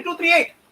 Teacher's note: The word 3 ends with the vowel E. And the next word 8 begins with the vowel E. They join together and it becomes a single E. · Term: Sandhi phenomena